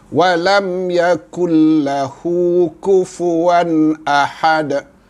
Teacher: Dan bila kita waqaf, maka dia adalah qalqalah kubra, bunyi lantunan yang besar, sebab duduknya di hujung bacaan, di hujung ayat